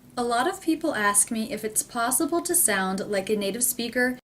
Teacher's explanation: in the entire sentence I don't hear any gaps or pauses between words